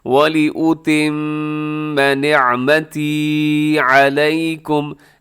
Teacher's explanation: پیش او، وَلِأُ تا زیر میم تم، میم زبر ما تم، میم مشدد ہے، ساتھ غنہ بھی کر دیجیے گا ، وَلِأُتِمَّ نِعْمَتِي عَلَيْكُمْ، نعمتی تھوڑا سا لمبا کیجیے گا، یا